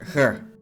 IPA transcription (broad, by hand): ç